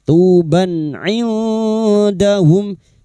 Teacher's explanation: Fathah tanwin atau fathatain dibaca jelas tanpa mendengung. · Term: idhar halqi